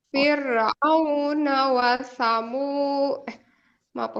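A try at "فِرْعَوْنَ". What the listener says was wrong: Ya, firnya tipis, jangan fir. Nggak usah di bibirnya bisa kan? Fir.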